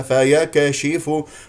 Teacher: اذا الكاف ساكنه اي فيها همس